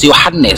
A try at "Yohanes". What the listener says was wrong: Yohanes, bukan Yohanes. Yohanes, Mas, jangan double L-nya. Bukan Yohanes. Yohanes. Yohanes. Jangan ditambah-tambah hurufnya.